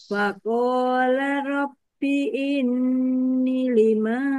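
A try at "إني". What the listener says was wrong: Linya 2 harokat. Inni.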